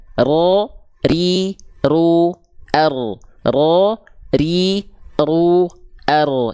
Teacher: Jadi huruf ro getarannya tidak berlebihan. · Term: takrir